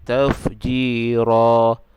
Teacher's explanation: tafjira ni bila kita waqaf dia jadi hukum mad iwab. Jadi panjang dia 2 harakat